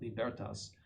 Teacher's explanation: Leo XIII in his encyclical Libertas, and that's how you pronounce that. The accent is on the second syllable